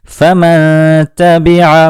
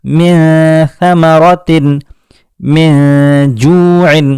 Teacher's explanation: فمن تبع، نون ساکن کے بعد تا آیا تو ہم نے نون ساکن کی آواز کو اخفا کیا، یعنی اس کی آواز کو چھپا دیا، اور یہاں ہم نے آواز کو ناک میں لے جا کر گنگنایا، جسے غنہ کرنا کہتے ہیں